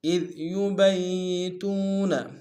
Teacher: اذ ذال کو باریک ادا کریں گے ، یبیتون میں یا کے اوپر شدہ زور دیں گے، تو